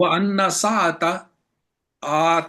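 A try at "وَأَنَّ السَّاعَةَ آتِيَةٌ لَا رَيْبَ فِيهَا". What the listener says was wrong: سا کو لمبا کریں ذرا، ہاں جی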